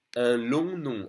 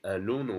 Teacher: Now we have the on sound by combining on or om. Both are on. Again, the third very nasal sound in French, on.